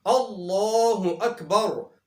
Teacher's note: اللہ اکبر کے اندر لفظ اللہ کو موٹا پڑھا جائے گا کیونکہ لفظ اللہ سے پہلے زبر ہے